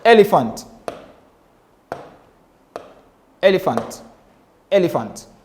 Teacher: we have one stressed syllable followed by two unstressed syllable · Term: dactilic meter